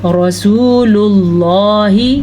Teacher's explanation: را کو پر پڑھنا ہے کیونکہ پھر سے را پہ زبر ہے